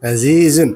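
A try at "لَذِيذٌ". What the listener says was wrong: Ya, kalau lazizun kayak zaih nanti.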